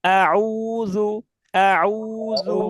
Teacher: পেশ এবং ওয়াও, এই দুইটা জায়গায় ঠোঁট, মুখটা গোল করতে হয়। মুখটা যত হ্যাঁ সুন্দর, যত বেশি গোল হবে আমাদের উচ্চারণ তত বেশি সুন্দর হবে।